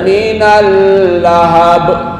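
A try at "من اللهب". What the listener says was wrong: Bukan minallah ya. Minal Lamnya nggak boleh lama-lama, hanya lewat. Minal lahab, bukan minal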